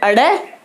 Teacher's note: ताड़नजात वर्णों का उच्चारण करेंगे तो इनसे पहले हम अ ध्वनि यानी अ स्वर का उच्चारण करेंगे